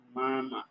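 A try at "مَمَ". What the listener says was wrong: না এখানে টান পড়ছে কেন, টান থাকবে না হারাকাতের উচ্চারণ। মিম জবর, মিম জবর মামা, এখানে টান হবে না মামা, হারাকাতের উচ্চারণের সৌন্দর্য এখানে, এখানে কোনো টান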